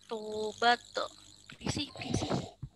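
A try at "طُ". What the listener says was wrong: Belum naikin pangkal lidah, naikin pangkal lidahnya di jadi pu, bukan to, tapi pu. Karena memang kesulitannya kayaknya di sini deh, naikin pangkal lidahnya kan ya.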